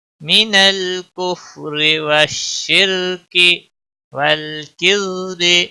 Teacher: والشرک را ساکن سے پہلے زیر ہے تو باریک پڑھا جائے گا